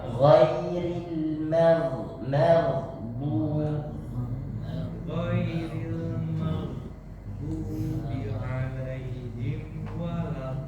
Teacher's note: Mad lazim kalimi musaqqal harus dipanjangkan 6 harokat dan berada salah satu tandanya adalah ada tasydidnya, makanya harus ditekan.